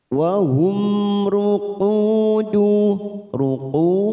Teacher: mim sukun bertemu ro namanya Idhar syafawi kita baca jelas tanpa mendengung wahumuku ruku dum bertemu sukun dua harakat kita panjang kan ruku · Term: idhar safawi